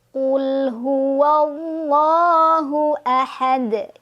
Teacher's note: jadi rongga mulut agak lebih tertutup ya pas ngucapin allahah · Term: tafkhim